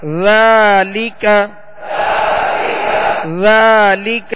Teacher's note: ذال کو نرمی کے ساتھ ادا کرنا ہے، اس میں بالکل سیٹی کی آواز پیدا نہ ہو